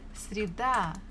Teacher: Stress falls on A.